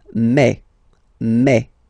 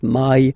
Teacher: French remember when you combine this a and then e vowels you get the sound e e so really open E